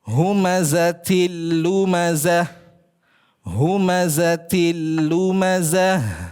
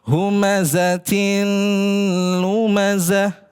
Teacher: ta marbutah kasratain bertemu dengan huruf lam. Nah, maka di situ idgham bila gunna. Jadi jangan baca humazatin lumazah.